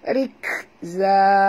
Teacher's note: Bunyikan hamas pada kaf yang mati